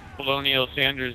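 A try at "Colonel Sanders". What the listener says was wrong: Did you just say colonial? Did you seriously just say colonial? No, it's not. It's colonel.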